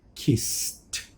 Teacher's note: So, all I look for the sound is before the ed if it's unvoiced. Kiss, add s is unvoiced, add the ed, and it becomes t, kissed.